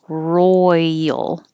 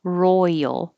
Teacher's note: So you go from a Y position to an L.